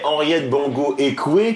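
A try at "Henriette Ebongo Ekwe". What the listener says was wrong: Henriette Ebongo. Voilà, rien à voir avec Bongo.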